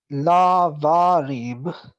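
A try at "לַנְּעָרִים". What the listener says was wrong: this is a noon. la ne'arim.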